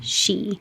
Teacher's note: when you're saying she, you know that the E needs the lips to come back, so the lips won't stick out so far, she. But if you say shoe, your lips are getting ready for the oo, which requires more lip rounding, shoe.